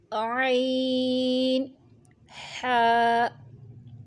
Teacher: عین، حا، حلق کے درمیان والے حصے سے ادا ہوتے ہیں۔